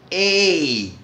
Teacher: E ele é ditongo, gente. Ó, nós pronunciamos isso como ditongo, 2 sons. Ei, existe o I aqui, como parte desse som.